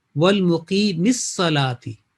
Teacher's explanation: یا بھی جو ہے تلفظ میں نہیں آتا، لکھا جاتا ہے یا تلفظ میں نہیں آتا، نون تو بالکل ہی غائب ہو جاتا ہے